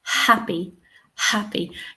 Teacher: the first syllable is stressed and we can hear the H